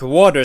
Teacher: the T sound is dropped all the time in the Cockney accent